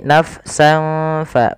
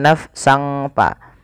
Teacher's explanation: nafsan Fa bukan nafsang Fa jangan jangan juga pakai Eng tapi nafsan fa nafsan fa bukan naf sangfa ya kemudian juga · Maka suara sinnya ini, suara tanwinnya dimasukkan ke huruf fa. Awalnya nafsan, karena bertemu dengan fa disamarkan surat tanwinnya, dan inilah yang kita namakan dengan bacaan ikhfa.